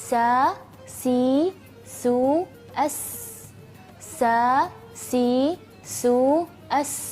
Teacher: yaitu sifat safir nah safir itu yaitu berdesis